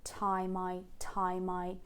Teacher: both time and I have the diphthong fine, I call it fine, and it starts pretty low in the center